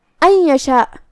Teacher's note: ان یشاء یہاں نون ساکن ہے، پھر حرف الیا ہے، یہاں حکم ہے ادغام بغنہ، تو ہمیں نون کو یا میں ملاتے ہوئے غنہ اور تشدید کے ساتھ یہ حکم کو ادا کرنا ہے